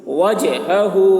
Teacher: جیم میں قلقلہ یعنی جیم کی آواز ڈبل نکلے گی